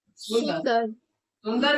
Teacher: अनुस्वार का चीज ये होता है, अनुस्वार को बोलते समय नाक से हवा निकलता है, अनुस्वार ना का उच्चारण करता है।